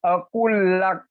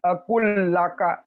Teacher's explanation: Lam mati itu kalau di sini di tulisan ini kan lamnya mati, tapi cara bacanya lam mati ini kita tidak sebutkan, tapi seakan-akan ditasjidkan ke lam yang selanjutnya